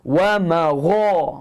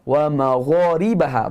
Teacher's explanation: Bunyinya hujung halkum. Tak berangin, huruf ghain tak ada angin.